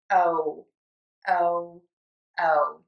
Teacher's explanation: Your mouth is going to be open, tongue is going to be low in the bottom of the mouth, then you're going to move to a pucker. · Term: long o